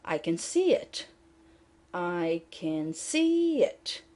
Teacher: a statement I can see it I can see it so in statements our intonation goes down at the end falling intonation